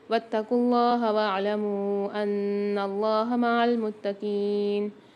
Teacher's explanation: اللہ کے لام کو موٹا پڑھیں گے کیونکہ اس سے پہلے پیش اور آگے اس سے پہلے زبر بھی آ رہا ہے.